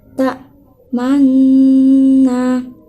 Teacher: Di sini ada ismam, di mana cara membacanya yaitu dimonyongkan.